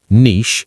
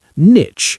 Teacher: Niche, with the long E vowel sound ending in sh, and niche, with the short I vowel sound ending in ch, as in cheese.